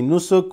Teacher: we say nusuk without reading the last vowel if we're going to stop.